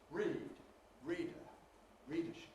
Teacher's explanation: we have to fit in more and more unstressed syllables therefore the stress syllable gets clipped